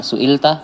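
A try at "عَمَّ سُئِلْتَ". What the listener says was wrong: Ya, amma su'ilta. Mimnya pendek ya. Amma su'ilta.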